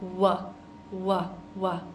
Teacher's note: then I'm pushing my lips out to make that w w w sound